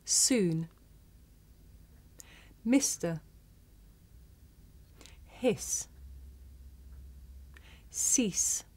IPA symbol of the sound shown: s